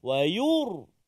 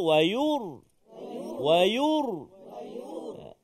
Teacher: Lepas tu baru tebal sikit. Sebab huruf ra yang sukun sebelum dia baris dhammah bagi depan. So ra tu tebal.